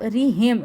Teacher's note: را کو باریک پڑھیں گے، اس کے نیچے زیر ہے